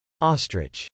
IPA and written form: ˈɔːstrɪtʃ (ostrich)